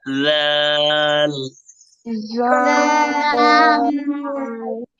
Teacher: soft করে জাল, জিভের আগে বের করে বলবেন